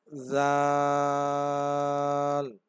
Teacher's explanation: যেখান থেকে উচ্চারণ হবে জালটাও একই জায়গা থেকে উচ্চারণ হবে অর্থাৎ জিহেবার আগা সামনের উপরের দুই দাঁতের আগার সাথে লাগিয়ে